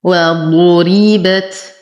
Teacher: نفخم الضاد مع إتمام الضم. نرقق الراء مع إتمام الكسر. بت. التاء تحتاج إلى همس فهي ساكنة.